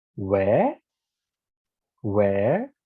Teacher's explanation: in the rising pattern of intonation you start low and you go up with your voice where where you can hear that i start low and i